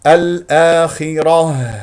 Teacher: ساكن قبلها همزه مفتوحه الخاء مفخمه مرتبه اخيره مرتبه خامسه الاخره الراء مفخمه لانها مفتوحه وقفت على سكون تاء مربوطه وتكون هاء ساكنه مهموسه من اقصى